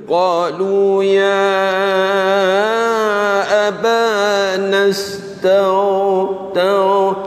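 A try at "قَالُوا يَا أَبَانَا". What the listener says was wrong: Dia tak boleh lama tu, tak boleh menarik. Tau ni cepat, laju. pendek ya Kalau ain boleh, lain tak boleh kan.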